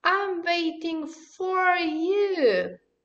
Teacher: You see that for, the word for is getting stress. That's why it is a strong form of the word.